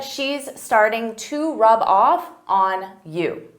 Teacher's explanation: off because rub off is a phrasal verb they go together I can take that b sound and connect it to the next word but I have to combine them together